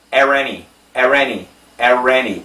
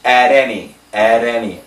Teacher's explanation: It's a flat T sound, which sounds like a D, not an R. At any. That's not an R.